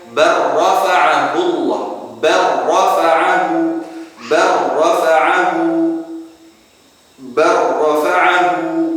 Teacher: Jadi lam dengan ra, maka ini harus kita idghamkan. Termasuk dalam 4 keadaan yang harus kita idghamkan.